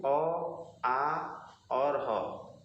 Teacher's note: कंठ में अ, आ और ह ये तीनों कंठ से बोले जाते हैं